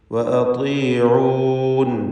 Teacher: ത്വാഇന് ഏറ്റവും കുറഞ്ഞ തഫ്ഖീമാണ് നൽകുക കസ്റായതുകൊണ്ട്